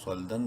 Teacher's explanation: صاد لام زبر صل، منہ بھر کے پڑھیں گے صاد کو. دال دو زبر دن، صلدن.